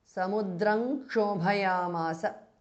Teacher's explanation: Samudram Kshobhayamasa bha is Mahapranah. Samudram ends in Anuswara followed by Ksha, which begins with K. So it becomes Samudrang Kshobhayamasa. Anuswara changes to Nga.